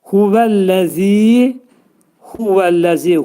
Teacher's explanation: Əlləzini yumuşaq şəkildə, əlləni yumuşaq şəkildə deyirik. Zə hərfi pəltək deyilir və 2 səs qədər uzadılır.